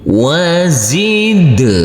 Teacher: Kita uraikan dulu. Wazid, huruf dal yang bersukun ini wajib kita pantulkan karena di sini adalah bacaan qalqalah